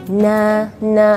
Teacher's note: pangkal lidah tidak bertemu langit-langit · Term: sifat istifal